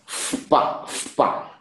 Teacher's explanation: if visarga comes in front of pa, okay, then that visarga is changing into fa.